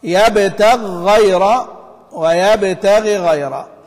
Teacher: فالتقت غين يبتغي مع غين غيره، والأصل أنهما غير ملتقيتين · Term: الوجهان